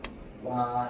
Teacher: 어떻게 입을 일단 오 모양으로 만들어. 그러고 나서 아를 바로 나잖아. 그러면 와가 됩니다.